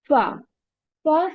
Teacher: Fa sound comes when the inner portion of the lower lip meets the edge of the upper two front teeth.